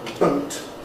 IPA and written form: bəʊt (boat)